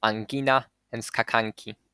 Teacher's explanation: if na is followed by ka or ga, it is then post-palatal or prevelar